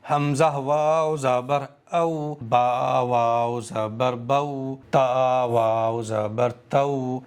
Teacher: حروف لین کو جب بھی پڑھیں گے معروف پڑھیں گے, مجہول نہیں پڑھیں گے. کھینچیں گے نہیں حروف لین کو, جلدی پڑھیں گے. جھٹکے کے ساتھ میں نہیں پڑھیں گے, نرمی کے ساتھ میں سافٹلی پڑھیں گے.